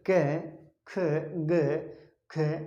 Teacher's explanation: इसके अंदर क, ख, ग, ख, ये आप उच्चारित करके देखेंगे तो हमारा जो क, ख, जो क वर्ग है वे कंठ से उच्चारित होता है, इसलिए क वर्ग पूरा इसमें आएगा।